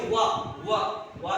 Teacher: वा में ओठ नहीं मिलते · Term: वकारो दंत्योष्ठ